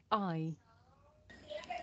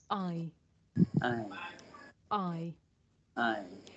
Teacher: This is a diphthong, a double vowel sound. The shape the mouth makes changes from the beginning of the sound to the end. It's pronounced I.